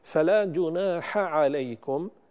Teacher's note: فلا جناح عليكم، الحاء مع العين، لا بد من تمييز الحاء والعين وهما حرفان يخرجان من مخرج واحد، فلا بد من تمييز الحرفين عن بعضهما لقرب أو لاتحاد مخرجهما، فأحيانا يتداخلان مع بعضهما فينبغي للقارئ أن يميز بين الحرفين.